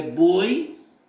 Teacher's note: o fechado menor abertura da boca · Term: ditongo fechado